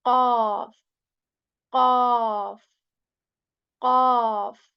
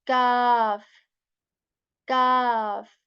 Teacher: the back part of our tongue, it touches the soft palate with strength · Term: heavy letter